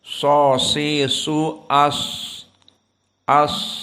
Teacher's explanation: ujung lisan dengan apa apa yang di atas dari Sanaya assufla gigi seri kita yang bawah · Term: Shad